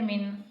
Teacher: یہاں پہ گنہ نہیں ہوگا کیونکہ یہاں پہ نون ساکن کے بعد حمزہ آ رہا ہے تو حمزہ پر گنہ نہیں کیا جاتا۔ من، حمزہ لام زبر